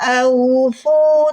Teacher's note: Jadi ketika membunyikan huruf waw sukun yang didahului harokat fathah, bunyikan dengan mudah atau lembut. Au, waw sukun bunyinya u. Di huruf waw punya sifat rohwah, mengalir suara. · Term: bacaan layin